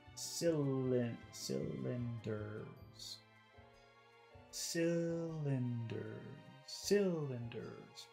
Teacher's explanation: The first vowel sound is long because the accent is on it.